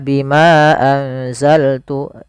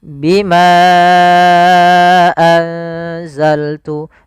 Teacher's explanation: Contoh di sini bima satu kata, anzaltu satu kata. Maka bimanya kita panjangkan sepanjang 4 harokat. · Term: mad jaiz munfasil